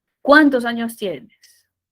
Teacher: el pronombre interrogativo también, al igual que el exclamativo, estará en el punto más alto y luego cae.